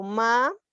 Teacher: yo no leo maes, ¿verdad? Sino leo ma y separo la vocal y va con la otra consonante. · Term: hiato